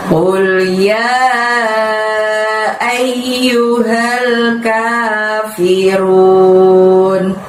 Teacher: Lalu di ayat yang ke-1 ini ditutup dengan lafaz al-kafirun. K-nya panjangnya 2, fi-nya pendek, run minimalnya juga 2 panjangnya